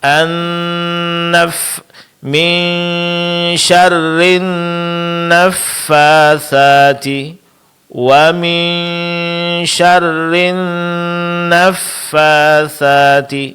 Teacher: Pada kata an-naffatsati dengungnya lebih lama. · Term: dengung pada nun tasydid